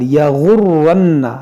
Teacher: را مشدد ہے، نون مشدد ہے. اس کو پڑھیں گے دو بار